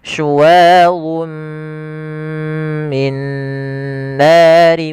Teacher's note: awalnya suadun ketemu mim maka suara tanwinnya masuk kepada huruf mim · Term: idgam bunah